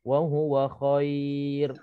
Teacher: Okey, kalau kita tengok wa huwa khairul lakum, contohnya kalau kita sambung wa huwa khairul lakum, dia tak dimad sebab ra itu tak dimatikan. Tapi kalau kita berhenti wa huwa khair, ra itu mati dan berlakunya di sini mad lin. Qadar bacaannya boleh kita baca 2, boleh kita baca 4 dan boleh kita pilih baca 6 harakat.